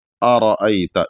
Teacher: یا کسی بھی حرف کو عمومی طور سے جو موٹا پڑھا جاتا ہے وہاں پر اپنی زبان کو اوپر والے جو تالو کا حصہ ہے وہاں لے جا کر کے جب ملائیں گے تو وہ را موٹا ہو جائے گا یا وہ حرف موٹا ہو جائے گا، تو وہاں سے وہ موٹا ہو جاتا ہے۔